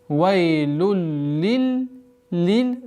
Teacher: Здесь мы применяем правило идгам без назализации, с полной ассимиляцией.